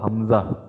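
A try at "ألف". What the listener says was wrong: এই যে এই যে এটা কিন্তু হামজা নয়, এটা কিন্তু আলিফ।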